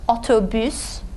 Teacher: Front vowel, it's rounded. You round your lips when you say U.